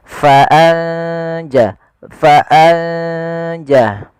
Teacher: ikhfa membaca di antara keduanya yaitu samar-samarkan nunnya atau biasanya ada mengantinya dengan ng itu untuk sementara gitu ya